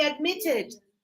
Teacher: the stress is on the last sound, so you say admitted